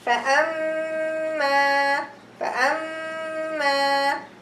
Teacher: Here I have the ghunna and the alif following each other, so it's going to be 2 haraka and 2 haraka if I am stopping reading.